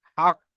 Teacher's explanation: কি শেষে এখানে আমি অফ করলে বা দাঁড়ালে হাক, শেষে কলকলার একটা আওয়াজ আসবে হালকা। কফের মাখরাজে ধাক্কা লেগে একটা আওয়াজ, দ্বিতীয়বার একটা আওয়াজ আসবে। যখন আমি এখানে সাকিন করে পড়বো না, তখন এখানে হক কি পড়তে হবে, কফ জের কি পড়তে হবে।